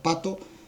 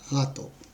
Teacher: el fonema consonántico /p/ es bilabial, sordo, oclusivo, y el fonema /g/ es velar, sonoro, oclusivo